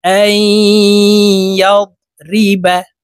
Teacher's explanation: হামজা ইয়া জবর আই গুন্নাহ করে পড়তে হবে, মাঝখানে জজমওয়ালা নুন বাদ পড়ে যাবে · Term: ইদগামে বা গুন্না